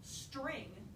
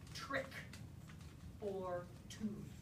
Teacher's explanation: the target gesture for the t or the t sound is to have the tongue hitting in a sharp tapping motion against the alveolar ridge. That's the target gesture.